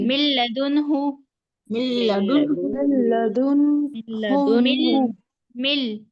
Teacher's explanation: جی تو یہاں پر بھی نون ساکن کی جو آواز ہے، نون ساکن اور تنوین کی آواز بالکل ختم ہو جائے گی، ڈائریکٹ ہم میم کو لام سے ملا کر پڑھیں گے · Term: ادغام